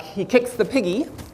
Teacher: you get a strong weak type of rhythmic unit that we can call a foot · here the follows the monosyllabic word kicks you get a strong you get stress on kicks and then the the the article is a weak syllable so you get a strong weak type of rhythmic unit that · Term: strong weak prosodic unit